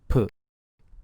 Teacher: Burst of air right after P sound. The sound this consonant make is voiceless, just like English P, but more aspirated. It is stronger, so you should feel more aspiration when you say P. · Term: aspirated consonants